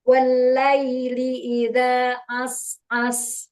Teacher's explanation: Jadi sin yang pertamanya dialirkan. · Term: sin sukun